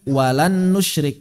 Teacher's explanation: kita mengucapkan huruf kedua sambil mengalirkan suara dari rongga hidung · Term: ghunah